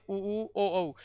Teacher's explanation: इनका उच्चारण करते समय अपने होठों की आकृति या होस्ट की आकृति कैसे हो जाती है? गोल हो जाती है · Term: वर्ताकार स्वर